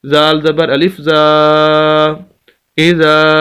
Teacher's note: زال کے آگے الف مدہ ہے تو اس وجہ سے زال کو ہم لمبا کریں گے